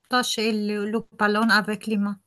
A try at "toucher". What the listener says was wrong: oui, il ne faut pas toucher, tout. sound ou, I need your lips to be extended. Otherwise, you go towards the O.